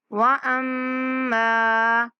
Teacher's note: واما میم پر غنہ کریں گے